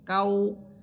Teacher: ইন্না আ'তাইনা কাল, কাফ ওয়াও সবর কাউ, এখানে কাফ ওয়াওকে ধরবে, ঠোঁট গোল করে পড়বেন।